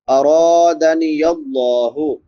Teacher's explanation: را پر پڑھیں گے کیونکہ را کے اوپر زبر ہے اور لفظ اللہ پر پڑھیں گے کیونکہ لفظ اللہ سے پہلے زبر ہے۔